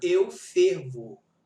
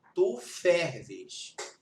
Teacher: Fervo é fechado e ferves é aberto. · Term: metafonia